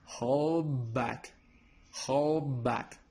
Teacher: we don't pronounce the d sound we pronounce b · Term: assimilation